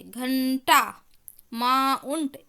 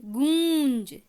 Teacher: जो आवाज़ है वो नाक और मुंह दोनों से निकलेगी, सिर्फ मुंह से नहीं। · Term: अनुनासिकी